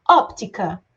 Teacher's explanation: aquela palavra que tem como mais forte tônica a antepenúltima sílaba então a última penúltima antepenúltima então a antepenúltima sílaba mais forte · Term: proparoxítonas